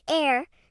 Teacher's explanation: for the word heir, as in someone who inherits a fortune, the H is also silent. It sounds like heir.